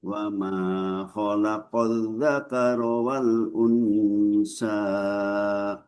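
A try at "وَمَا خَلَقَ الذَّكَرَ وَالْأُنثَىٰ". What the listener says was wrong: Tipiskan lagi. Wal unsa. Ini lidah harus melewati daripada dua gigi atas dan bawah. Sa. Sa. unsa harus lebih tipis lagi.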